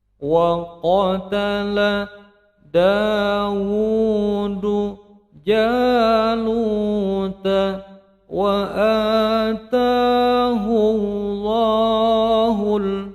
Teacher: dhammah bertemu dengan lafzul jalalah atau lafaz Allah, bacaannya menjadi tebal